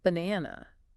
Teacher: In British English, the stress is cleaner and a bit shorter on that second syllable.